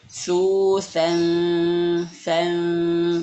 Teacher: ikhfa di sini lidahnya sudah disentuhkan ke ujung gigi seri atas atau digigit ya